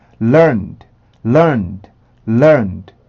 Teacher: D 발음 소리가 음절의 끝으로 올 때는 드라는 소리를 귓속말로 한다고 생각하시면 돼요.